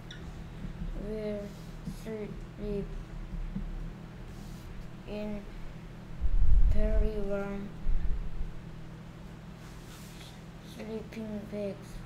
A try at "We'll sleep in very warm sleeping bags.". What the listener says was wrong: 자, 그래서 다 잘하는데 속도를 조금만 더 높여서 유창성이라고 fluency라고 하는데 fluency는 조금 부족해 보여.